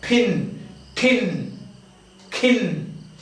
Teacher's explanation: an H sound accompanies the release of or the pronunciation of plosive sounds, voiceless plosive sounds, when they are in the initial position of the word. This means first. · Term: aspirated